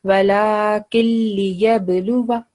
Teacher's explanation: So over here, when we are joining this noon sakin, so here is a noon with sukoon and the next lam is with shadda. So we are going to drop the noon sound and we join the key with lam